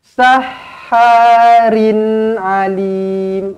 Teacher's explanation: Rin tanwin selari bertemu ain, izhar halki dibaca dengan jelas dan terang.